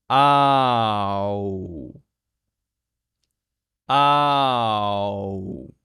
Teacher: no right it's a very smooth transition between those two sounds you have a starting point a and an ending point U and you have to make it smooth in between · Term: OU sound